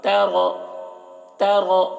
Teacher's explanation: را کو پر پڑھیں گے، تا کو باریک